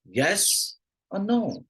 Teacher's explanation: so guess or no right it's a choice based question and the pitch will go up on the first choice and down on the next choice